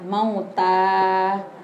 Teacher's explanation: Mauta tadi nggak usah sepanjang mauta, biasa aja 2 ketukan mauta.